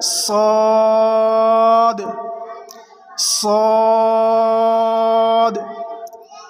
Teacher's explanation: सौद को ज़बान की नोक और दोनों दांतों के अंदरूनी किनारे से अदा करेंगे। ज़बान की नोक और दोनों दांतों के अंदरूनी किनारे से सौद को अदा करेंगे।